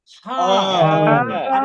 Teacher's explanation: হা হ্যাঁ গলা চেপে গলার মাঝখান থেকে দুই নাম্বার মাখরা যেটা গলার মাঝখান থেকে গলা চেপে হা বলেন